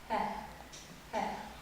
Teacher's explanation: Это фарингальный звук «х». Образуется в глотке и произносится с придыханием.